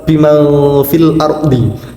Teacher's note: Sehingga lafadz tersebut dikategorikan sebagai salah satu contoh dari bacaan ikhfa hakiki dan cara pembacaannya harus samar-samar disertai dengan mendengung